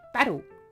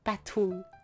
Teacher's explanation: in the word battle, we pronounce it as a D, battle, instead of battle.